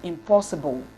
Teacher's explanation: It is realized as im when it occurs before a bilabial sound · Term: Homorganic nasal rule